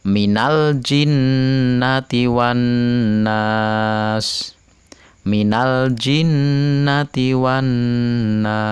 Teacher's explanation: al-nya dibaca jelas karena bertemu dengan huruf Jim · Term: Idhar Qomariah